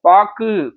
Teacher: ஆனா பாக்கு அப்படின்ற சொல்லுல பாருங்க, கூ முழுமையாக ஒலிக்கவில்லை. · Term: குற்றியலுகரம்